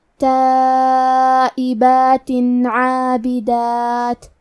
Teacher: تو ہم تنوین کو ظاہر کریں گے اور اسے نون ساکن پڑھیں گے اور بغیر غنہ سے یہ حکم کو ادا کریں گے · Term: اظہار